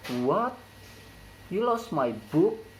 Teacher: The high rise intonation occurs in word what and book. It can be used when we can't believe the question.